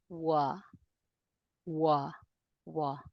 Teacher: make no sound for the ooh, but starts with the ooh position.